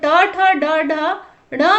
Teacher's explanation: जीभ जो है मुख के जो है हार्ड प्लेट से टच हो रहा है, इसीलिए इनका उच्चारण स्थान जो है मूर्धा है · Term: ट वर्ग